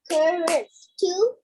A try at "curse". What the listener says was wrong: No. Curse. yes, 1 syllable. Curse. Curse.